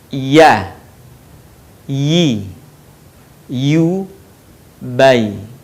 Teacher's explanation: Huruf ya keluar dari tengah lisan, disentuhkan dengan langit-langit.